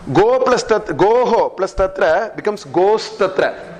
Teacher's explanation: This Visarga becomes Sakara.